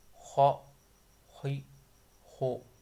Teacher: یہ حروف مستعلیہ ہیں جو موٹے پڑھے جاتے ہیں